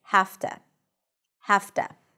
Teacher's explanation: So the voiceless consonant kind of says to the voiced consonant, listen, don't work too hard. And the voiced consonant, the V in this case, becomes voiceless. So it's actually easier to pronounce. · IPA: [hæf.tə]